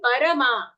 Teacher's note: Not parma, the ra is full.